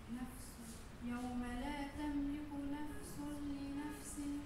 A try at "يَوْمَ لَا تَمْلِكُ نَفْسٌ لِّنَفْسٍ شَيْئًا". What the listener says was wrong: ترجع تجيبي لي في التنوين يا أخي، تركي لي تنوين، انسي هون التنوين، الضمة الثانية انسيها ماشي فيها، نفس سو واحدة ضمة واحدة، نفس لنفس شيئا.